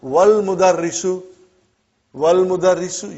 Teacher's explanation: Wal mudarrisu, you did not pronounce Hamza. Okay? Because it's Hamzatul Wasal.